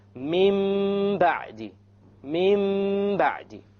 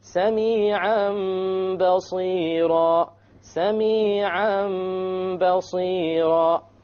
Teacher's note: We change the Noon into a Meme, and we perform a Ghunnah on it. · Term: iqlab